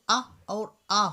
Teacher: छोटा आ जो होता है उसको अ और बड़ा को आ बोलते हैं तो ये निकलते हैं कंठ से